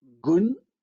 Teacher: the velar stop g is articulated with rounded lips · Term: labialization